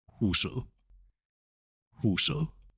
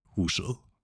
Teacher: Now the soft D sound occurs if a word ends with et. So it doesn't sound like huset with a T, but an ed sound